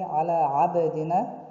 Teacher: And finally على عبدنا, here قلقلة in باء which has سكون